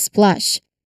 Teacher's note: Remember with the S at the beginning, the P sound here is unaspirated. No big puff of air after it. This makes the transition from S to P to L very fluid.